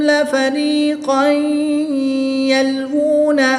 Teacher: دو زبر کی تنوین کے بعد یا حروف یرملون میں سے ہے تو یہاں پر ادغام مع الغنہ ہوگا، یعنی کہ غنہ کر کے پڑھیں گے۔